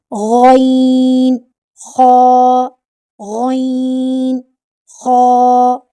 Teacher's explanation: जब अदना हलक वाले हरूफ अदा करते हैं तो जो ऊपर वाला हिस्सा होता है जो मुंह की तरफ होता है गले का हिस्सा म से ख वाली आवाज प्रोड्यूस होती है और ये भारी आवाज के साथ अदा होते हैं क्योंकि ये हरूफ मुस्तालिया में से हैं